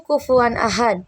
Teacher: Tanwin pada kufuan izhar atau jelas karena bertemu hamzah di ahad. Dal di akhir dibaca qalqalah kubro saat berhenti.